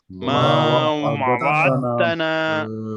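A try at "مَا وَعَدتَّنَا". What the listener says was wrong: और कर रहे हैं आप, दाल नहीं पढ़े वहाँ पे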